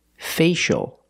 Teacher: the C is pronounced with the sh sound like shoes and show